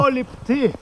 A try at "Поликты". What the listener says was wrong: не поли, а полик. Поликты. Поликты.